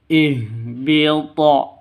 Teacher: Cara bacanya dipantulkan ke huruf qalqalahnya.